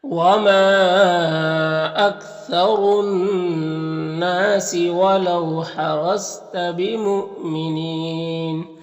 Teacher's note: حمزہ ساکنہ ہے واو کی شکل میں تو اس کو جھٹکا لگے گا